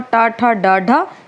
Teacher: मुड़कर हमारी जीभ तालु को स्पर्श करती है, तो मूर्धन्य है।